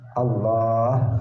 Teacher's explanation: Allah, A-nya pendek, yang panjang itu lamnya yang di tengah. Allah, kemudian ada haknya di akhir.